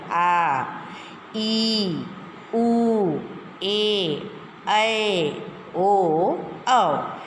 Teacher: इनका उच्चारण ऊंचा तथा लंबा होता है, थोड़ा ऊंचा और लंबा होता है।